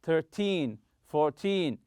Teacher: So in teen numbers, when you're talking about quantity, money, or time, stress the teen syllable.